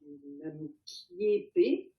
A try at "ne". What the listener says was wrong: Non. Chechawa, ne. Ça, c'est un ne, c'est pas un nam. Ouais, Chechawa ne. Parce que tu as dit kiepe, et c'est un wa ici.